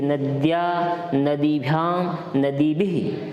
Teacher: देखिए उच्चारण का भी आपको अच्छी तरह से ध्यान रखना है कि नद्या, नदीभ्याम, नदीभिः, थोड़ा इस विसर्ग को हल्के ह के तौर पर उच्चारित करना है